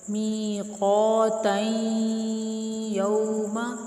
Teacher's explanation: تنوین کی وجہ سے یا میں ادغام ہوگا غنہ کے ساتھ ایک الف کے برابر رک کر، میقاتین یوم، ٹھیک ہے، یہ اس کا ادغام یا کے ساتھ ہو رہا ہے غنہ کے ساتھ، ٹھیک ہے۔